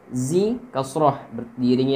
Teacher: Zi kasrah diiringi ya mati panjangnya 2 harakat mad tabi'i.